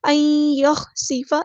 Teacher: سین کی سیٹی ہم نے واضح کرنی ہے. ان یخسف بکم الارض، کاف باریک ادا کریں گے، میم کو ہم نے لام کے ساتھ ملا دینا ہے، حمزۃ الوصل ہمارا ڈراپ ہو جائے گا. · نون ساکن کے بعد یا آیا تو ادغام مع الغنہ ہوگا، ادغام ناقص. ان یخسف، ایک الف کے برابر رکیں گے.